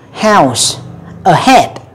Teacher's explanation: Rồi, cái âm cuối cùng trong cái loại âm này đó là chữ âm h đó các bạn. Ha, tại cái âm h này nó hơi yếu chút xíu. À, nhiều khi chúng ta đọc chúng ta sẽ nhiều khi chúng ta quên nó luôn đó.